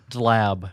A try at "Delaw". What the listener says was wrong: No, wait, the B is silent. Delaw. Delaw.